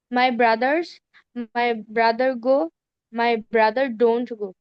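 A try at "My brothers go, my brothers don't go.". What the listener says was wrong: এখানে তোমার এসটা কি স্পষ্ট করতে হবে, তো ব্রাদার বলতে হবে, গোজ হয়ে যাবে গা।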